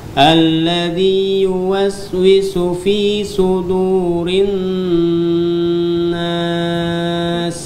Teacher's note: huruf sin tipiskan dia, tajam suaranya